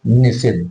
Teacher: नी और सिद्ध ये दंत सा है लेकिन जब जुड़ेंगे तो इसमें मूर्धन्य सा हो जाएगा